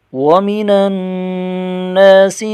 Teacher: نون مشدد ہے، غنہ کر کے پڑھیں گے